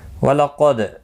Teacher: قاف حروف مستعلیہ میں سے ہے، پر پڑھنا ہے، دال ساکن پر قلقلہ ہوگا